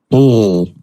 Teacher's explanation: The back of your tongue is lowered. The ol is made with air passing through the mouth around the sides of the tongue, like a liquid. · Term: liquid consonant